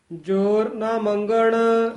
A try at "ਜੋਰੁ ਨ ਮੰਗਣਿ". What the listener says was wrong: ਗੱਗਾ ਲਾ ਕੇ ਮੰਗਣ, ਉੱਤੇ ਟਿੱਪੀ ਵੀ ਹੈ। ਮੰਗਣ ਕਵਾਂਗੇ ਤਾਂ ਟਿੱਪੀ ਰਹਿ ਜਾਏਗੀ।